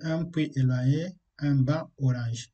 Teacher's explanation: La liaison ne se fait pas non plus lorsqu'on a un nom se terminant par une consonne muette.